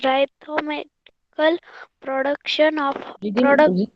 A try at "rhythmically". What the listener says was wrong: Rhythmically, beta, not rhythm.